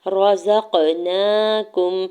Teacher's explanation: زا کے زبر کو قاف ساکن کے ساتھ ملاتے ہوئے قاف ساکن پہ قلقلہ ہوگا